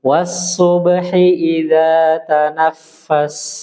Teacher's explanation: Hi-nya kasroh, satu harokat aja.